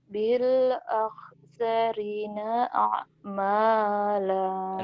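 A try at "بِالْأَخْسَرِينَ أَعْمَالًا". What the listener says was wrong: Rinya kan panjang. Ah, bukan ak, ah. Ah, ah. Bil akhsarina a'mala.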